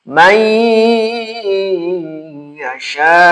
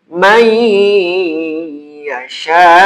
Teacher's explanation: Nunnya jangan dibaca, dianggap hilang saja, masuk aja ke iya. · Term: idgham